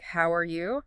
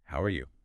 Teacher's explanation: But if you say the exact same words, "How are you?" but with a friendly rising tone, especially maybe rising a bit at the end